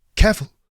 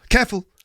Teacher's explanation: It's kind of one of a family joke that my mum has said that obviously thousands of times, and she always used to say that to us as kids, but she used to say careful, which is careful is 2 syllables, but she squeezed it into 1 syllable.